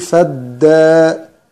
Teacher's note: أولا همزة فدارأتم اللي هي بعد الفاء همزة وصل تسقط وصلا، فنخرج من الفاء على الدال مباشرة، نقول فدا فدا، همزة الوصل هذه أكنها غير موجودة. فدا في ألف صغيرة بعد الدال، هذه تمد بمقدار حركتين